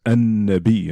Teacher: you don't pronounce the lam. The lam goes silent and it becomes an-nabi, and the nun gets doubled